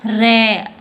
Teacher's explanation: प्रकंपित या लुंठित। जब हम किसी वर्ण का उच्चारण करते हैं तो हमारी जिह्वा में 2-3 बार कंपन उत्पन्न होता है। मतलब जिस वर्ण का हम उच्चारण करते हैं तो हमारी जिह्वा में कंपन उत्पन्न होता है, तो वह व्यंजन है र।